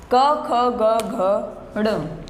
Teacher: हमारे गले से इसकी आवाज ध्वनि निकलती है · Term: कवर्ग